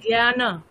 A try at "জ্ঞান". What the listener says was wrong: সংস্কৃতে জ্ঞান নয় জ্ঞান নয়ের পরে যে অকার আছে ওটা উচ্চারণ করতে হবে